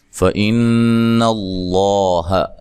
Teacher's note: یہاں نون مشدد پہ غنہ ضروری ہے